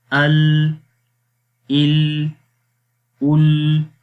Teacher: اور لام کے اندر زبان کی سائڈ سے جو ہے وہ آواز باہر نکل جاتی ہے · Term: انحراف